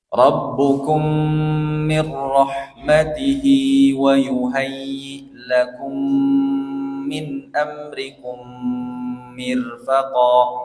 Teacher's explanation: ada 3 mim yang didengungkan dengan dengung yang sempurna karena idgham mimi.